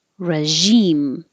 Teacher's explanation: this requires the zh, which is like shh, but with voicing. So if you have trouble finding that position, make the shh first and then use sound.